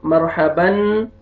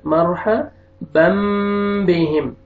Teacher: تنوین کے بعد فتحتین کے بعد با آ رہا ہے، تو یہاں پہ آپ نے فتحتین کے جو نون ہے اس کو میم میں چینج کرنا ہے، بن نہیں پڑھنا، مرحبن غلط، مرحبم بہم.